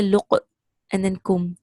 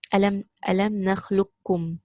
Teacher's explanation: Now, our way of reading is Hafs and Asim, and they read it as a complete idgham kamila. So qaf is completely merged into the kaf in our recitation